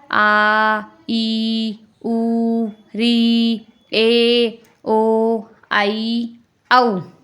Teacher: दूसरा है इनमें नाम लिखे हुए नहीं है। दूसरा है दीर्घ स्वर जिनमें दो मात्रा का समय लगता है।